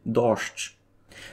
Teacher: споза того зглушування моє «дощ» звучить ги «ш» у кінці